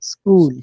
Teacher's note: it's not es school we just start with the S sound